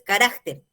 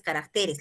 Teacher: el singular es carácter y el plural es caracteres. La sílaba tónica se mueve